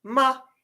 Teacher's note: your fourth tone is going to be a dropping vowel going to be the opposite of your Rising vowel